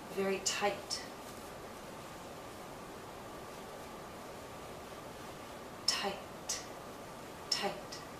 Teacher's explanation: followed by a voiceless consonant like t t the vowel length is shorter